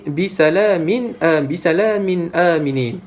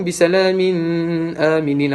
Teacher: Apabila tanwin bertemu hamzah, kita perlu jelaskan bacaan dia tanpa dengung. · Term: izhar